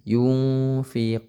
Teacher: ada 15 ya salah satunya huruf Fa yungfiquun nah nah yunfiquun qu dibaca panjang ini karena di akhir kalimat seperti ini ya Lil Muttaqin yang tadi maka hukumnya Mad Arid